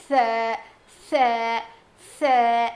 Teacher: زبان کی نوک کو سامنے کے دو دانتوں کے کنارے کو لگانے سے ادا ہوتا ہے. مطلب ایڈجسٹ کو لگانے سے ادا ہوتا ہے.